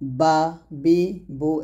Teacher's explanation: বাটা দুই ঠোঁট মিল করে ওই ঠোঁট থেকে উচ্চারণ করতে হবে, বা বি বু এরকম। · শুরু থেকে আপনাকে হামজার উচ্চারণ করতে হবে আ ই উ এরকম বা টা দুই ঠোঁট মিল করে ওই ঠোঁট থেকে উচ্চারণ করতে হবে